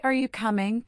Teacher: Let your voice go up a bit on coming. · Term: rising intonation